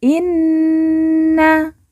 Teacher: Nun yang bertasdid langsung kita tekan kita tahan dua harakat dan didengungkan